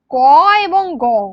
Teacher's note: ক এবং গ এই দুটো বর্ণ উচ্চারণ করতে গেলে শ্বাসবায়ুর কম লাগে তাই জন্য এটাকে অল্পপ্রাণ বর্ণ বলে আর বর্গের দ্বিতীয় এবং চতুর্থ